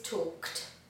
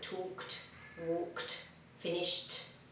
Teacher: Notice we don't add an extra syllable. We pronounce it with a /t/ sound.